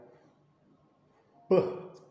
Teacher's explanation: it is pronounced by closing the two lips, upper lip and lower lip tightly, and then the air from vocal cords is forced to pass through mouth, resulting in plosive sound or stop. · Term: voiced bilabial stop